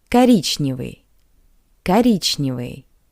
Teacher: O is unstressed. That's why we pronounce it as a. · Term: unstressed O